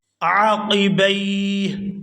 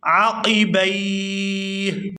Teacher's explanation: یہاں با کو یا ساکن کے ساتھ ملائیں گے تو کھینچ کر ادا کریں گے